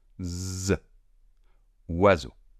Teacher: Le S étant entre 2 voyelles, on prononce un S sonore.